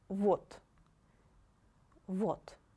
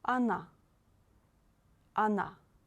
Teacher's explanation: For example, вот, вот. And we pronounce the letter O like A if this letter is not stressed in this word